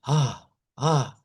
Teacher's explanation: se escucha como un jadeo, como cuando hacemos la H